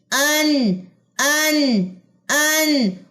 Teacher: नून के ऊपर तशदीद है, नून मुशद्दद है, तो यहाँ पे गुन्ना आएगा